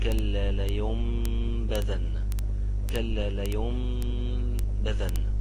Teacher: الحكم الثامن أي نون يكون عليها الميم ديت أو أي نون يكون عليها الميم اللي فوق ديت ما تتنطقش النون وننطقها ميم